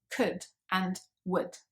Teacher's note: those sounds are much shorter so it's just wood could and you can hardly hear the vowel sound there it is there but it's very very short and very subtle